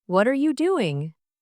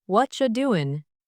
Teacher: instead of saying what are you doing, Americans often say what you doing? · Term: connected speech